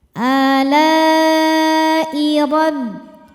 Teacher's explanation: Maka lamnya panjang, boleh 4 boleh 5 harokat. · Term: mad wajib mutasil